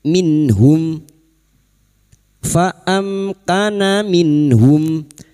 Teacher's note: Fa amkana minhum, minhum nun sukun bertemu ha, bertemunya nun sukun atau tanwin dengan salah satu dari 6 huruf ini termasuk huruf ha, maka bunyi nun sukun dibaca jelas tanpa mendengung